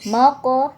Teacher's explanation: qof Sukun ini dibaca Qalqalah atau memantul ya dibaca qolqalah sugro karena ee sukunnya di pertengahan ayat Jadi · dibaca qalqalah sugro karena sukunnya di pertengahan ayat. Jadi pantulannya ringan. Mako, tidak boleh mako.